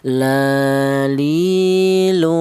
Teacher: huruf lam ini keluarnya huruf berasal dari ujung lidah menyentuh langit-langit mulut